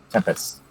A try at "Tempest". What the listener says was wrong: You keep adding a T in there, and there's no T.